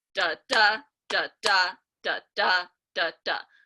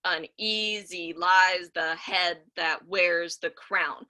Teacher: 10 syllables at the rhythm of a heartbeat, which goes unstressed and then stressed